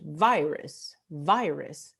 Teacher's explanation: es la primera sílaba que es tónica, la primera vocal I, virus. La segunda vocal, la última, es átona.